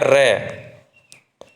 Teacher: लुठित व्यंजन, जिस व्यंजन में वर्ण का उच्चारण करते समय वायु जिह्वा के ऊपर से लुढ़कती हुई बाहर निकल जाती है